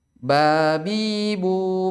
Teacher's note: ketika hendak ditutup kedua bibir nggak bisa diucapkan jadi harus apa menutup antara kedua apa namanya antara bibir atas dan bibir bawah dan menutupnya itu agak ditekan sedikit ya